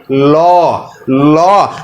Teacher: আপনার কিন্তু জিহবার যে মাথা রয়েছে সেটি কিন্তু উপরে যাতে মাড়ির সাথে লেগে যাবে পাশাপাশি দেখবেন দুই দিকে যে ফাঁকা জায়গা আছে এখান দিয়ে বাতাস বের হয়ে যাবে এই যে পাশ দিয়ে যে বাতাসটা বের হয়ে যাচ্ছে। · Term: পার্ষিক ধ্বনি